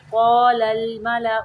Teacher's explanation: لام کو قلقلہ نہیں کرنا، لل نہیں پڑھنا